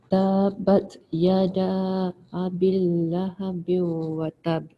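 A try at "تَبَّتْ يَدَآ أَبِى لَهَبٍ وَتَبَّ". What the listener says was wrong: Tu tak bunyi tu. Dia punya ba dia, kejap awalnya ni bila awak baca tabat ada sabdu kan. Jadi kita beratkan tabat yada. Ni panjang sikit. Okay, panjang sikit, ada boleh 4 harakat. Bi pun panjangkan sikit. Lahabiu, yang ini dengungkan.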